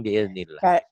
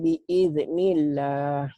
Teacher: Mirip ikhfas apawi bunyinya memang. Tapi jangan bibirnya jangan dibuka. Bibirnya dimingkemin, bunyi M. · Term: iklab